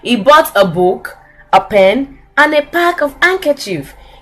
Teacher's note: we use the rise and fall intonation when we are making a list of items, when you are listing things. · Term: rise fall intonation